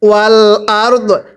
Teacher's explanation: আমরা দটা হালকা উচ্চারণ করব, রটা পরিপূর্ণ উচ্চারণ করব